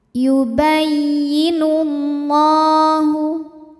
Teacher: alif lam ini tidak perlu kita baca atau diidgamkan langsung ke lam berikutnya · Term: alif lam syamsiah